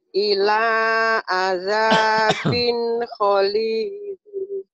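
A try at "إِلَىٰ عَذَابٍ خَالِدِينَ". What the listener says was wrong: Ila azabin golidin. Bukan kholidin ya, golidin. Ila azabin golidin.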